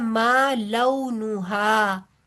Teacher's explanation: ठीक है, आगे आ रहा है मा लऊ नुहा, लऊ ये वाव, वाव लीन है, क्लियर करके इसको पढ़ना है, लू या लो करके नहीं पढ़ना।